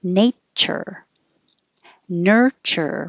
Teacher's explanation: this tu is really a cha the same exact sound as in kitchen and chicken